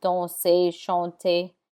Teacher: This list of words are mostly verbs like danser, to dance, danser, chanter, chanter. The ER has an A sound like AY